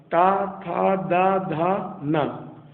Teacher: इनके उच्चारण में जीवा ऊपर के दांतों में जाकर स्पर्श करती है। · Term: दंत व्यंजन